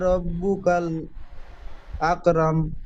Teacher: মিম যেহেতু আয়াতের শেষ তাই মিমকে সাকিন ধরে আগের অক্ষরের সঙ্গে মিলিতভাবে পড়তে হবে